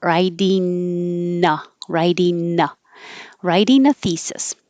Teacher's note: instead of ing, make it an n in the front, and it will connect easier.